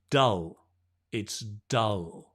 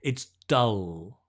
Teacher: The tongue just rests, relaxed on the teeth. So you get that dark L, right?